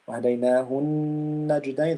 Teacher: the most complete غنة النون because of the شدة